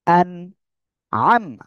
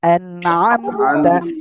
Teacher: এই যে নুন সাকিন, নুন সাকিন এরপরে ইজারের অক্ষর আইন আসছে, আমরা স্পষ্ট আকারে পড়বো। কি করব, স্পষ্ট আকারে পড়বো, আমরা কোনো গুণনা করব না। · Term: ইজহার